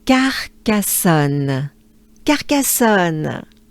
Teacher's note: we kind of emphasize the second A